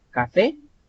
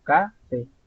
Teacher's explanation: fe tiene más fuerza vocal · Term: aguda